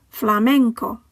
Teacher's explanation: The final word ends with a vowel, so the stress falls on the penultimate syllable.